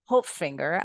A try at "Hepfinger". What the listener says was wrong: It's Hepfinger. Ignore the O.